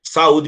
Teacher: Saúde, para mostrar que o A é uma vogal e o U também é uma vogal. Ele não é semi para ficar ligadinho ao A.